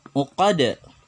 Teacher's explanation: dalnya bergetar atau ada pantulan di sini. Terdengar jelas. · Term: qalqalah kubra